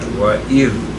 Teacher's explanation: تو تسہیل کے لیے سب سے پہلے ہم یہ کہتے ہیں، ارشاد باری تعالی ہے وَإِذْ ذَال، اِذ نہیں کہنا، زے نہیں بنانا، ذال ہے اذ میں، اور یہ اپنی زبان کو یہ اگلے دانتوں کے نیچے رکھ کے کہنا ہے